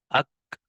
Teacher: لہذا شدت کا جو ہے وہ لحاظ رکھتے ہوئے آواز کو بند کر دیا، لیکن کسی قدر ہمس ہونے کی وجہ سے آواز کو بند ہونے کے بعد ہلکا سا جو ہے وہ سانس بھی جاری رکھ دیا